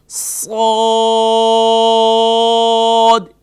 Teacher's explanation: اس کو ادا کرتے وقت شروع میں سیٹی جیسی آواز نکالیں گے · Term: حروف صفیریہ